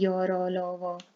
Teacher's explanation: ये सारे मुख के मध्य से बोले जा रहे हैं, ठीक है, मुख की छत और जीभ के बीच से, इसे अंतस्थ बोलते हैं